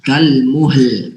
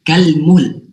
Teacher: Lamnya tuh kayak kita serempet sedikit aja gitu.